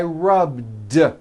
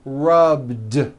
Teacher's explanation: the word rub ends with a voiced B